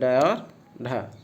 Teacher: जिनके उच्चारण में जिह्वा की नोक झटके से नीचे गिरती है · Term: उत्क्षिप्त